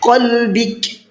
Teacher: علی قلبک، یہاں پر دیکھیے شروع میں بڑا قاف ہے، آخر میں چھوٹا کاف ہے، تو بڑے قاف کو منہ بھر کے پڑھنا ہے، چھوٹے کاف کو باریک کر کے پڑھنا ہے